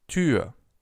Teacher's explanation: The Ü in Tür, on the other hand, is again a perfect example for a long Ü sound.